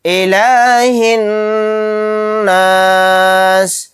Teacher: نون کے اوپر تشدید ہے تو یہاں پر غنہ کر کے پڑھیں گے